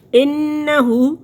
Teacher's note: نون مشدد ہے، 2 دفعہ پڑھا جائے گا، اور نون مشدد میم مشدد پر غنہ ہوگا